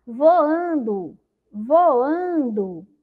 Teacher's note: Então, a palavra voando, a sílaba mais forte é o an, né? A que demorou mais na minha boca, voando.